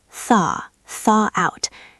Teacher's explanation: thaw has that soft th sound. You have to stick your tongue out a little bit.